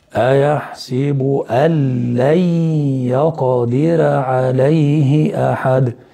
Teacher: تلاحظ إن أنا نطقت باللام المشددة، لغيت النون ونطقت لام مشددة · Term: إدغام بدون غنة